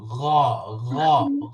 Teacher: একটু গলার মধ্যে আওয়াজটা বাজবে যেহেতু এটা গলার অক্ষর।